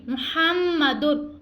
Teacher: را بغیر غنہ کے ادا ہوگا